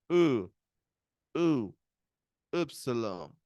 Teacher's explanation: francesa sería como u u como una u entre medio dic un sonido intermedio entre la u y la i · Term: u francesa